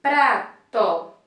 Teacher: esse som de pra, o P e o R é pronunciado juntinho e eles não podem se separar. Porque se separar eu não vou obter o som que eu necessito para formar a palavrinha prato.